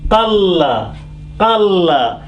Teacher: But here this noon again is hidden. Only qa is touching lam, qalla, qalla, and it is not joining through the nose